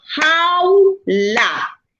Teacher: vocal A abierta y vocal U cerrada, se mantienen unidas, no se separan y forma un diptongo